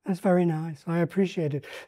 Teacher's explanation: he goes into this high, slightly breathy, gentle way of speaking. Um, it it certainly makes a contrast with the sometimes more belligerent way of talking.